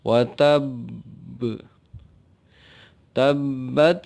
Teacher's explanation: ini adalah Qalqalah yang harus diperhatikan berbeda dengan yang lain karena ada tasydid di atas huruf ba jadi agak ditekan